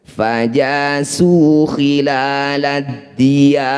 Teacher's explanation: Maqabi'i bertemu huruf hidup kemudian dihentikan, jadilah bacaan mad arif disukun. Cara bacanya ya, panjangkan 6 harokat, huruf terakhir sukunkan.